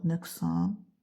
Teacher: Nöqsan sözü yenə də kar samitdən əvvəl gəlib. K olacaq.